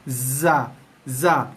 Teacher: Hujung lidah sentuh belakang gigi bawah, ada bunyi desir sikit. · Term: Huruf zai